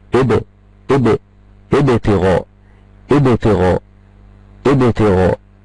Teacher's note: بعمل ذبذبة في الحرف، والذبذبة دي تميل الى الفتح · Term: القلقلة